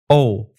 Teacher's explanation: to make this vowel start with a tongue position of Oh your tongue is relatively high in your mouth and all the way back